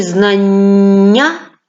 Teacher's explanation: дві однакові букви н у слові знання позначають один м'який подовжений приголосний